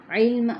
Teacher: عین جو ہے وہ وسط حلق سے ادا کرتے ہوئے لام کے ساتھ ملائیں گے ، اور میم جب ساکن کیا تو میم کیا ہوا وقف،